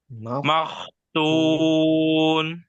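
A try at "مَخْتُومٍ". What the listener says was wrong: Masih tebal. Makhtum, tuh. Makhtum, tuh.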